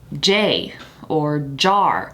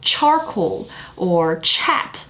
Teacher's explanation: So J is voiced, CH is unvoiced.